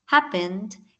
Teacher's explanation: es que cumpla con la regla consal consonante vocal consonante pero que la última sílaba no sea acentuada O sea que la fuerza y la acentuación esté en la primera sílaba